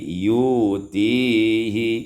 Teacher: ibdalul hamzati wawan ditukar hamzah dengan waw